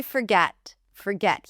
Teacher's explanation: Here it's not the or sound, it's a schwa. We don't pronounce the r.